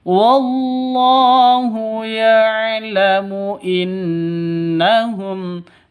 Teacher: non tasydidnya berarti gunnah musyaddadah, dengung 2 ketukan